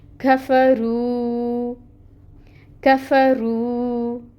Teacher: کاف، کاف باریکی سے ادا ہونے والا ہے، یہ مرقق ادا کرتے ہیں، اس کے اوپر فتحہ کی حرکت ہے، 1 کاؤنٹ پڑھیں گے۔ فا میں ہمس ہوتی ہے اور کاف میں بھی ہمس ہوتی ہے، تو وہ دونوں آپ کوشش کر کے لے کے آئیں، ٹھیک ہے۔ · را کو آپ نے پر پڑھنا ہے کیونکہ اس کے اوپر پیش کی حرکت ہے